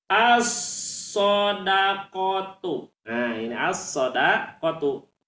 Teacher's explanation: Lamnya ditulis tapi tidak dibaca. Ya, ditulis tapi tidak dibaca, langsung kepada sodnya. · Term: alif lam syamsiah